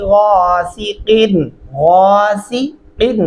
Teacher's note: गासिकिन क़ाफ गले से अदा करेंगे